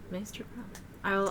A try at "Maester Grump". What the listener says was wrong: Not Master, Maester.